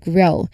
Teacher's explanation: This is the voiced equivalent of G. The G sound also from the back of the throat directly connects to the R sound grow. Listen to how the voice G transitions seamlessly into the R sound. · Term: G cluster